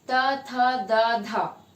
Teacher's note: next आता है dental, जिन ध्वनियों के उच्चारण में जीभ के आगे का हिस्सा दांत के पीछे के भाग में लग के ध्वनियों का उच्चारित करता है